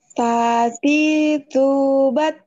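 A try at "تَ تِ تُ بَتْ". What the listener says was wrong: Belum ada aliran udaranya. Ketika sukun tuh pasti kedengeran banget. Kalau makrosnya benar.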